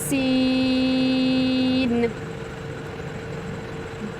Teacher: سین کو سیٹی کی آواز میں پڑھنا ہے اور لمبا کر کے پڑھنا ہے